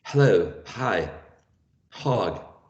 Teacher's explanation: So it's voiceless, fricative because there's friction, and glottal, right?